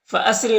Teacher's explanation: را کے نیچے زیر را کو باریک پڑھیں گے